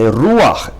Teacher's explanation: Instead of saying ruach, you say ruach, accent on the first syllable. And instead of saying rucha, which is incorrect, you have to say ruach.